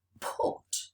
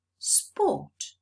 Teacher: It's preceded by s. So I'm not supposed to aspirate it. I'm supposed to say sport.